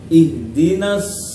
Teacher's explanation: fathah nunnya masuk ke huruf shad karena di sini merupakan bacaan al-syamsiyah. Shad salah satu dari huruf syamsiyah.